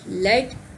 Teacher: The L sound is called a lateral liquid and is formed by letting the air stream flow around the sides of the tongue as the tip of the tongue makes contact with the middle of the alveolar ridge.